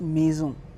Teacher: If S comes between two vowels, so we will call it Z sound, Z. Like in French we call maison to a house.